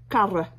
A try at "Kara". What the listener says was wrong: I think you're rolling the R's too much. You're being very French. Oh, very Parisian French.